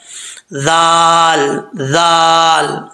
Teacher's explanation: ذال بغیر سیٹی کے پڑھا جاتا ہے، اس کا مخرج ہے زبان کی نوک اوپر والے دانتوں کے نچلے حصے سے لگے